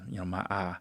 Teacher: he won't say I, he'll say ah. So that's called monophthongization, and monophthongization is a property that African Americans got from the time when they were in the South, because Southerners do that too.